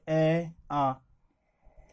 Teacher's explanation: इनका उच्चारण स्थान कंठ होता है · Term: कंठ स्वर